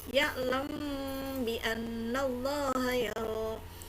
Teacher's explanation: Mim sukunnya tidak terdengar dengan jelas ketemu dengan huruf ba maka dibacanya adalah ikhfa syafawi.